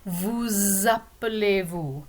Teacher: If you see the S at the end of vous, normally it's not pronounced, but when it's connected to a word that starts with a vowel sound, like appeler, then we link them together and you pronounce the S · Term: liaison